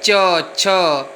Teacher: इसका उच्चारण स्थान है तालु। जीभ ऊपर की ओर आप देखिए, च, छ ऊपर बीचों बीच में टच कर रही है, स्पर्श कर रही है। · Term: च वर्ग